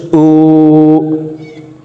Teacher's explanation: উল্টা পেশ দিয়ে ঠোঁট গোল করে এক আলিফ টেনে উচ্চারণ করে শিখব। দেখুন, হামজা উল্টা পেশ উ।